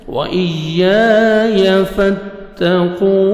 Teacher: या मुशद्दद है, सख्ती से आपने मिलाना है हमजा को या के साथ, या का साउंड आना चाहिए। अलिफ मद्दा 1 सेकंड आपने या को खींचना है।